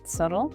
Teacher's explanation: we do not pronounce the letter b at all. The b is completely silent. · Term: silent b